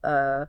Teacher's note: It is the sound of the vocal tract at total rest. a lazy neutral uh sound.